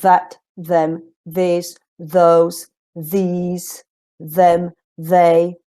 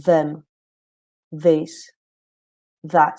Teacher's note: remember that they begin with the voiced version of the th